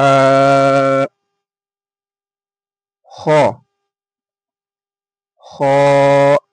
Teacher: হা উচ্চারণ হয়ে থাকে মুখের খালি অংশ থেকে। হা, খ, খ, খ উচ্চারণ হয়ে থাকে হালাকের বা কণ্ঠনালীর শেষ ভাগ হতে